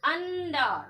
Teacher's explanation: ये अनुस्वार जो है ना यहाँ पर आपका आधा न का आवाज दे रहा, अंडा है ना, अंडा आधा न का आवाज चूंकि दे रहा है।